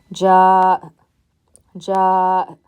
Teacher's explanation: there's no vowel on it we're just going to stop on it with that glottal stop sound